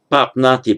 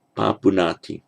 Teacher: an u slips in, so it's not papnati but papunati